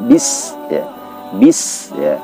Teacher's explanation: Bis itu sin keluar daripada udaranya ya, ada udara yang keluar. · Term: hamas